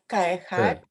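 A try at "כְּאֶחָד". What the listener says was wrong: When you have that shava at the beginning of the word, don't let it become too big. It's just a little tiny sound. It's not an ah. Ke'echad. Beor. Just a little tiny sound. want to. You don't want it to grow and become too big and think it's a real vowel.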